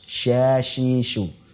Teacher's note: Shin di tengah lidah. Ya, pada posisi langit-langit atas.